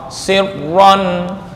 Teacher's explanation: Yang paling kuat ra, sirron dari segi tekanan nih.